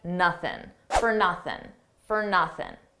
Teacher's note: For nothing, we already talked about for, an unstressed fur. And notice how I dropped that G sound at the end of nothing